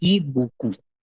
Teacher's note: the P is silent at the end.